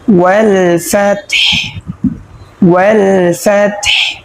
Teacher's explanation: অর্থাৎ একটা কায়দা আছে যে ওয়াকফ যেখানে হয়, ওয়াকফের শেষে যে হরফটা থাকে সেটা সদা সর্বদাই সাকিন হয়ে যায়। তো এখানে যেহেতু আমরা ওয়াকফ পেয়েছি এবং শেষে হা পেয়েছি, সেজন্য হাটাকে সাকিন করে পড়ব। হা যদি সাকিন হয় তাহলে ফা তাকেও ধরবে এবং হাকেও ধরবে।